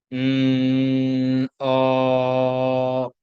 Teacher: ये सिर्फ vocal cord से हमने उसको वाइब्रेट करके हमने आवाज निकाला